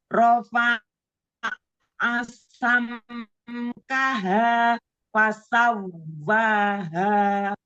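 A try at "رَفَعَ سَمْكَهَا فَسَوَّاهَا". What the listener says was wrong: Nah, nanti huruf ta, huruf kaf ya ditipiskan lagi ya, biar taknya nggak kayak huruf to ya. Jadi ditipiskan lagi, tipiskan huruf ta, kaf ya.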